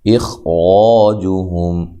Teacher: کاف کو باریک، میم ساکن کا اظہار ہے۔ اخراجہم، حمزہ کو تحقیق سے، خا کو موٹا اور را کو موٹا، الف مدہ، اور یہاں میم ساکن کا اظہار ہے، جب ملائیں گے غنہ نہیں کریں گے، میم ساکن کو ہلانا بھی نہیں ہے۔